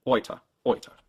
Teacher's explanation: The big difference is in your lips. When you say boy, your lips relax at the end. Whereas in German, they stay rounded and tense the whole way through.